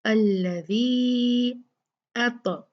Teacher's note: फलयाबुदू रब्ब हाज़ल बैत अल्लज़ी, देखिए अल्लज़ी, ये क्या था? अल्लज़ी मद असली था, लेकिन क्योंकि हमजा इसके बाद आ गया है तो हम इसको 4 काउंट खींचेंगे।